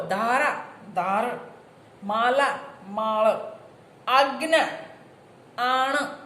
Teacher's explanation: ખાસ કરીને અંત્ય સ્વર રસ્વ બન્યા